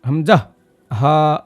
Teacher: এ দুটো আমাদের কন্ঠস্বরের শুরুর দিক থেকে বের করতে হবে